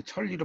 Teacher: 자, 유음화라고 하는 것은 이제 리을과 니은이 만날 때 니은이 리을로 바뀌는 거예요